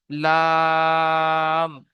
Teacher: লাটা টান দেবেন, দিয়ে মইতে গিয়ে থেমে যাবেন, মইতে গিয়ে আর আওয়াজকে ধরে রাখা যাবে না। মইতে গিয়ে আওয়াজকে ধরে রাখা যাবে না, যেমন লা, লাটা টান দেবেন, লাম।